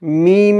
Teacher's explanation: মিম এর মধ্যে তিন আলিফ টান দিতে হবে